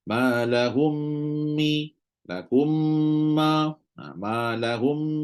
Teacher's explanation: jadi hukum dia hanya bunyi mim sahaja Tak bunyi huruf lain bila kita baca kita hanya baca mim yang kedua sahajalah tak baca mim pertama dah kita hanya baca mim kedua sahaja dan mesti ada sabdu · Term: Idam mutamailin, idgham